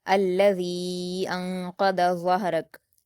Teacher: الذی، ذال پر یا مدہ ہے، دو حرکات کھینچتے، لیکن یا مدہ کے بعد حمزہ دوسرے کلمے میں ہے تو مد منفصل ہو رہا ہے، اس لیے ذال کے یا مدہ کو چار حرکات کے برابر کھینچیں گے